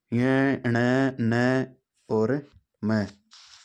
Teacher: मुख के साथ साथ नासिका से भी इसका प्रयोग यानी ध्वनि निकलती है नाक से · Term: नासिक के व्यंजन